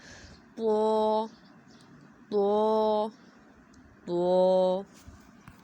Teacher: دانتوں کی جڑ کے ساتھ لگانا ہے تو ادا ہوگا، لیکن اسے موٹا کرنے کے لیے ہم نے زبان کی جڑ کو اوپر کی طرف اٹھانا ہے، آواز کو منہ کے اندر رکھنا ہے ، ہونٹوں کو گول نہیں کرنا، تو تو۔ نیکسٹ ہمارا قاف،